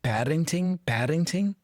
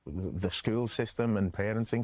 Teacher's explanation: Not parenting, but parenting. It's almost like he's flapping the R just like we flap the T for D